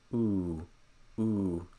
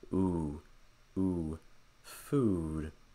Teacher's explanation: the back of my tongue is high in the front of my tongue is down so again round